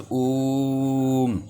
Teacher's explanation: ओम शब्द जो होता है वो प्लुत स्वर या त्रिमात्रिक स्वर होता है